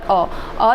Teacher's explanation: मध्य भाग से केवल एक ही प्रयोग करते हैं, केवल अ जो है केवल मध्य भाग से। अ स्वर केंद्रीय स्वर होता है, इसके उच्चारण में जीभ का मध्य भाग थोड़ा सा ऊपर उठता है